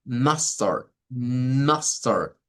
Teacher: Mustard es algo que suena no como una u, sino como una especie de a mezclada con la u. Es por la posición.